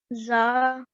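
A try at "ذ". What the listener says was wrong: Okay, so this letter is also a letter of the tongue. When you pronounce this letter, you touch your tongue on your top teeth, just gently touching, and you say dhal. Rather than saying za, we say dhal, and there's slight vibration.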